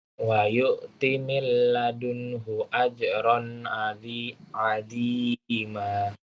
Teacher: hu pendek, milladunhu ajron tanwin ketemu ain idhar.